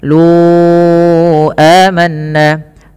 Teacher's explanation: panjangkan huruf lu sepanjang empat harakat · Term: mad jaiz munfasil